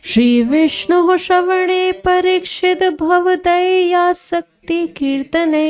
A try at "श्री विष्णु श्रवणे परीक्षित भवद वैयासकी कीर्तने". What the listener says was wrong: शक्ति नहीं है, वैयासकी है वो।